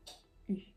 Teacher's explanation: pour le son u, on va mettre la langue contre les dents inférieures et plutôt vers le bas. U. Une astuce, vous pouvez commencer par le son I.